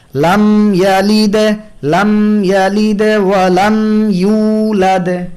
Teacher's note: মিম হরফে তাওয়াসসুতের সিফাত আদায় করতে হয়, অর্থাৎ আংশিক পরিমাণ সময় দিতে হয়, নাকে নিতে হয়।